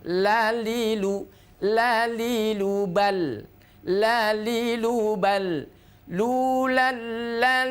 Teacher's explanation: karena huruf lam ini tidak boleh mengeluarkan udara atau bukan huruf Hames